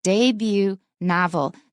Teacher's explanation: this is a French word and that's why we don't pronounce the T